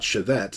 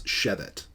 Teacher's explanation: the first syllable is always accented